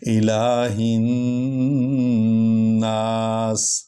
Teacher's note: یہ جو ہا ہے یہ سینے والی ہڈی سے نکلتی ہے، یہ ہا ہلکی نہیں ہے، تو یہ سینے والی ہڈی سے اس کو نکالنا ہوتا ہے۔